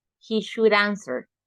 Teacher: we're going to make the sound of the D like an R when you have a word with a vowel after should would or could